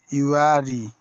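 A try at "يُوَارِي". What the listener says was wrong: ইউ what a টান দাও।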